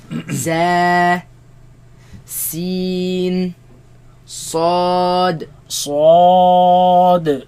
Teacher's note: They come from the tongue placed behind the bottom teeth.